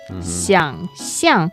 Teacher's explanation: 想, the third tone. 象, the fourth tone.